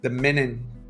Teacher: Noten cómo levanto y trato de hacer la G, pero no le inyecto aire. Hay supresión.